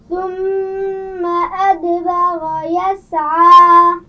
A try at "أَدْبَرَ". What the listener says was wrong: را کو واضح کیجیے. ادبر.